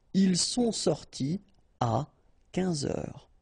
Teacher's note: You don't make a liaison after your participe passé. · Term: no liaison